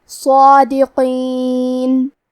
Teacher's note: کلمت صادقین میں حرف الصاد ہے، صاد حروف التفخیم میں سے ہے، لہذا ہمیں یہ حرف کو بھاری آواز میں پڑھنا ہے. کیونکہ اس پہ کھڑا زبر ہے تو یہاں مد الف ہے، لہذا ہمیں مد الف کو بھی بھاری آواز میں پڑھنا ہے